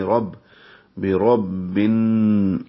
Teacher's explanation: را کو پر پڑھیں گے، را کو با سے ملائیں گے، رب، بے رب بن۔